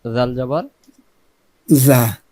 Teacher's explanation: জাল অক্ষরে জিহ্বার আগা থেকে নরম করে পড়তে হয়